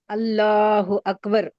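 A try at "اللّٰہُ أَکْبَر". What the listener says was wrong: अच्छा, ये अल्लाह को मोटा पढ़ना है, बारीक पढ़ना है? तो आप अल्लाह अकबर, मोटी आवाज तो आई नहीं मुझे।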